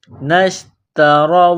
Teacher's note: تا کو باریک کرنا ہے، را کو موٹا کرنا ہے، را کے اوپر زبر ہے